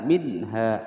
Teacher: nun sukun bertemu ha, hukum bacaan idhar, dibaca dengan jelas.